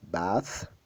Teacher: Alors, la langue entre les dents, bathroom.